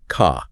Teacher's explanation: That R sound after a vowel is dropped, so car sounds more like ka. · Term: non-rotic, non-rhotic